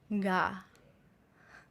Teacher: the ga is just like a light motion with the back of the tongue